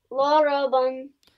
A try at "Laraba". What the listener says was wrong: Good job, Laraba. This is the stopping mode.